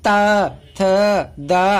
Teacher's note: आता है, आपको देख सकते हैं। फिर आती बात दंत की, तो जो दांत से जहां जीभ टकरा जाए, जैसे त थ द, आप देख रहे हैं कि जीभ हमारी दांत से टकरा रही, ऊपर वाले दांत से टकरा रही , नीचे वाले से नहीं कर रही, तो ये हो जाएंगे